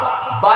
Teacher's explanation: یہ شفوی ہے، بے با منہ بند ہو جاتا ہے